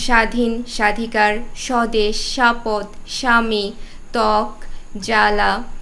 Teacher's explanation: ব ফলার উচ্চারণ হচ্ছে না শব্দের প্রথমে এটাই আমাদের প্রথম নিয়ম শব্দের প্রথমে যখন ব্যঞ্জন বর্ণের সাথে ব ফলা থাকবে তখন সেই ব ফলার উচ্চারণ হবে না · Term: ব ফলার কোন উচ্চারণ নেই